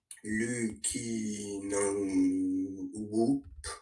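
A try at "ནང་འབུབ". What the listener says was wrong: Ouais, Nang Boop. Bah parce qu'on a sa pata ba, chapkyu bou, ba sa boop. C'est carrément écrit boop. Donc Nang boop.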